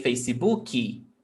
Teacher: We add this extra vowel sound after K.